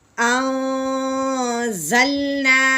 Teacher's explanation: ہاں جی یہاں پہ پھر نون ساکن کے بعد زا حرف الکی میں سے نہیں ہے تو نون ساکن پہ اخفا کا غنہ کریں گے. زالام زبر زل، انزل، نون الف زبر نا، انزلنا.